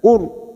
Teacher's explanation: apa bedanya tafkim dengan tarkik tafkim yaitu tebal jika tarkik tipis karena sebelumnya ada harakat dumah ro ini kita baca tafkim atau tebal kur posisi bibir kita pada saat membunyikan seperti orang cemberut Qur